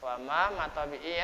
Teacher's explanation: panjangnya. Satu alif, dua harokat ya. Matabi itu bisa disebut mat asli ya.